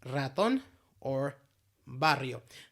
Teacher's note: Second type of R sound is technically is called trilled or rolled R. Technical name is voice alveolar trill.